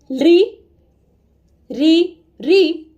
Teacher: री, री, री के उच्चारण स्वरवत होते थे, यानी स्वर के समान। संस्कृत में भले ही स्वर ध्वनियां रही, लौकिक संस्कृत में भले ही ये स्वर ध्वनियां रही, लेकिन इनके उच्चारण में परिवर्तन आ गया।